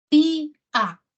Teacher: en tía tenemos dos vocales, la I y la A, ¿no? Y se separan. Tía, se separan. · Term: hiato